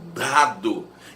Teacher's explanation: A consoante D é linguodental, a língua encosta o pezinho do dente em dado. E é importante entender isso.